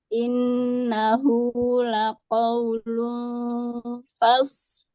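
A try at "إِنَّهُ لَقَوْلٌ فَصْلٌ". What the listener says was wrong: L-nya mana, Bu? L-nya nggak dengar, Bu.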